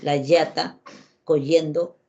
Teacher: Cuando el niño dice la yata, coyendo, su lengua no vibra. Entonces no tiene la posibilidad, no aprendió la posibilidad de hacer vibrar su lengua, y eso se puede corregir.